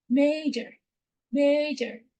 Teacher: the O in major is a schwa sound